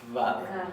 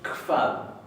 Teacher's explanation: se va a pronunciar como una leve KF. No se va a pronunciar vad. Se va a pronunciar kvad, pero más suave.